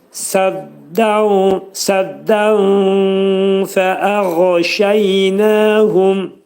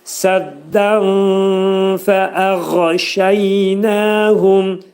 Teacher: Nun hərfi fənin məxrəcində gizlədiləcək. Fənin məxrəci də dediyimiz kimi yuxarı üst dişdən aşağı alt dodağın arasında olacaq. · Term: ixva